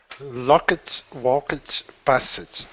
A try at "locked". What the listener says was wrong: Which pronunciation did you use for the ed suffix? No, you didn't. What sound were you using? You were saying ed, locked.